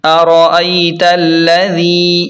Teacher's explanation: لام زبر لا، ارائیت ذال یا زیر ذی، ارائیت الذی، ذال کو نرمی کے ساتھ ادا کریں اور یا مدہ کو تھوڑا سا کھینچ کر پڑھیں، ارائیت الذی، اس طرح۔